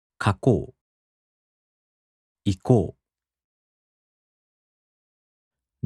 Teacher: the accent falls on the mora before う. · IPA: [kakoꜜo] [ikoꜜo]